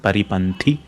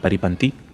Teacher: Even the tha is a Mahaprana sound.